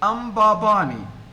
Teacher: m is not a vowel it is a consonant but it is acting as a vowel here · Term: syllabic consonant